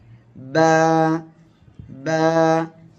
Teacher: হবে বা অক্ষরটা উচ্চারণ হবে এই যে দুই ঠোঁট দেখতে পাচ্ছেন এই দুই ঠোঁটের ভিজা অংশ থেকে আমাদের উচ্চারণ করতে হবে